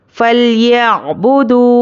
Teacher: वाव पर जज़म और उसके पहले पेश वाव मद्दा, इसको एक अलिफ के बराबर खींच कर पढ़ेंगे।